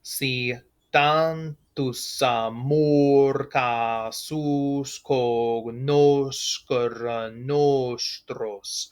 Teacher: That O in amor is going to be long because of its position.